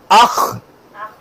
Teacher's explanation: گلے کے اوپر والے حصے سے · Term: مخرج